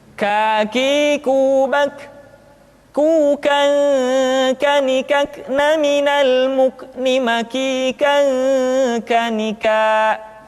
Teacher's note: diucapkan dengan mengangkat pangkal lidah kita ke posisi di depan huruf qaf kah diucapkan dengan mengalirkan nafas kita kah qwords terdengar ada suara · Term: huruf k